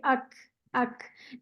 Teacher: काफ में ना एक हम्स होता है, यानी सांस की आवाज होती है